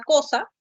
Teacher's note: la letra c va a representar a la oclusiva velar sorda